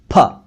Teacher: जब हम अपने दोनों होंठों को मिलाकर बंद कर लेते हैं और फिर एक तेज हवा छोड़ते हैं तो फ अक्षर निकलता है